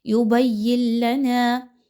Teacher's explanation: یبین لنا، نون ساکن کے بعد لام کا حرف آ گیا، ادغام ود آؤٹ غنہ کیا جائے گا. یہاں پر ایسا ادغام کیجیے کہ جس میں غنہ آپ نے بالکل بھی نہیں کرنا، لام کی ادائیگی فوراً سے کرنی ہے.